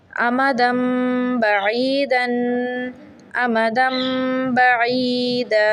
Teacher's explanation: اقلاب میں تنوین کو دو حرکت جتنا پڑھا جاتا ہے مطلب اس پہ ہم نے دو حرکت جتنی غنہ کرنا ہے